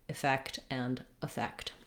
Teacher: you want just a short reduced vowel in both of the words effect and effect